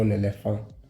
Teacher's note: So here, in this case, because of the liaison with the following E, the N is pronounced.